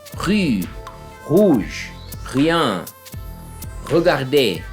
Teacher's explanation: Tem aquele R que é basicamente o mesmo do que nós brasileiros usamos hoje em dia, né? Que é esse R gutural.